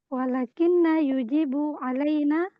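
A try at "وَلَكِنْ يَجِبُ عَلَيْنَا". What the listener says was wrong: kalau kalau ada walakin setelahnya fiil, kamu baca walakin, jangan walakinna. Walakin yajibu, yajibu alaina, wajib atas kita.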